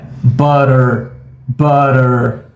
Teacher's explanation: Outra palavra que a gente tem aqui com o som do schwa no final é butter, butter, É porque aqui a gente tem o som do schwa acompanhado do som da letra R.